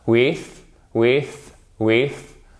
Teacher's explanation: vous faites riper la langue contre les dents du haut au moment où elle sort et la langue elle sort ce qui produit un son plus fort